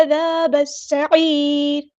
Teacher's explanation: عین کو مستحلق یعنی مڈل تھروٹ سے ادا کرنا ہے، الف مد آ گیا تو مد اصلی کریں گے.